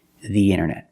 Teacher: Pronounce the with a long E, the internet.